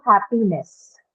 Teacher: no change in the stress pattern. It still remains on the first syllable, have, because NES is a neutral suffix.